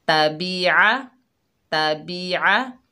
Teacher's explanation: ता के ऊपर ज़बर, बा के नीचे ज़ेर, आइन के ऊपर ज़बर, तीनों को बगैर खींचे पढ़ेंगे। आइन को हलक के दरमियान से अदा करेंगे